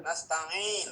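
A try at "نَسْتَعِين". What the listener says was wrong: Nasta'in, ain. Bukan hidung. Nasta'in. Nasta'in. Nasta'in, ain. Jadi ini tenggorokannya. Kalau nggak terbaca nasta'in, ain. Jadi suaranya ainang. Suaranya sengau. Nah, sengau ini bukan huruf ain.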